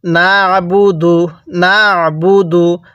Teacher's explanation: আইনটা পড়ার সময় গলার মধ্যে চাপ দিব তাহলে আইনটা সহি শুদ্ধ উচ্চারণ হবে